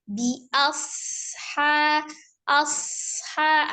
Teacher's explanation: alirkan shad karena memiliki sifat as-shafir